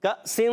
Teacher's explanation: کاف کا مخرج زبان کی جڑ تالو کا سخت حصہ